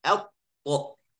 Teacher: Tapi kalau tasydid atto. Atto akan ada spasi atau ada sakta walaupun sedikit.